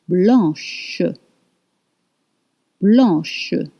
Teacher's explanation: If it's feminine, blanc, blanc, blanc, white. Now, blanc becomes blanche with sh sound at the end